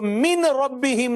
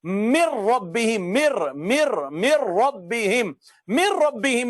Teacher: مر ربہم، مر مر مر ربہم، مر ربہم میں ناظرین کرام آپ توجہ کریں گے تو من میں نون بھی ختم ہو گیا ہے اور اس کی آواز بھی ختم ہو گئی، تو اس کو کہتے ہیں مکمل ادغام ہو گیا ہے۔